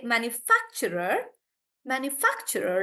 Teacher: the stress is on fact